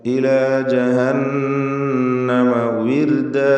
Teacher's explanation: വാവ് ചുണ്ടുകളിൽ നിന്ന് തന്നെ വരണം. താഴെ ചുണ്ടും മേലെ പല്ലും ചേർത്ത് ഉച്ചരിക്കരുത്. വിർദ, റാഇന് തർക്കീഖാണ്, നേർപ്പിച്ചുകൊണ്ട് റാഇനെ ഉച്ചരിക്കണം.